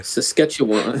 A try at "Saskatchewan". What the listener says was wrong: I feel like you said it like it was a sauce. You put more extra letters in it than it needed to be.